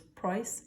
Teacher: on the islands instead of saying price they raise the a or i sound to oi